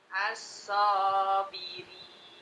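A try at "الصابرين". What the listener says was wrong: So-nya 2 harokat.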